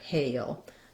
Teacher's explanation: So it's extra long because I'm going to be doing the hey, and then before my dark L, I have a little bit of a schwa sound, like a hail. When I move from the A to the shape, hail, there's a little bit of a hidden glide there, hail. So you might write it like hail, hail.